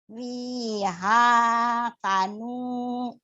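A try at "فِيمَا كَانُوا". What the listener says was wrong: Fima itu mim ya bukan fima. Fima kanu. Fima kanu.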